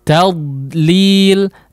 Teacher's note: Nah, kalau mau kita coba panjangkan, dia tidak mengeluarkan udara ya, tidak menghembuskan udara keluar mulut ya, tapi suara tetap muncul, suara tetap keluar di dalam ya, keluar di dalam mulut maksudnya ya, tetap ada suara di dalam mulut ya, tetap mengeluarkan suara tapi suaranya di dalam mulut ya. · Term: rakhawah huruf dhad